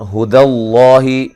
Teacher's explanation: لفظ اللہ کو موٹا ادا کرنا ہے، اس سے پہلے حرف پر زبر ہے